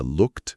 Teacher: O segredo é que esse e do final quase nunca é falado forte.